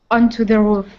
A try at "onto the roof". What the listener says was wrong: Excellent. Nice job.